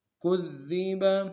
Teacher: دال کو باریک کریں گے، دال کے اوپر تشدید زور دیں گے، اگلے دال کو باریک ادا کریں گے ، با کو نون سے ادا کریں گے، كُذِّبَ۔ فَإِن كَذَّبُوا